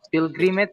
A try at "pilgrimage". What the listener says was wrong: Pil ya, biasa bukan pile. Pilgrimage.